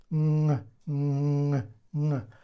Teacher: It's when we touch the back of our tongue with this place, with this place in our mouth. And we say n, because air goes through the nasal cavity.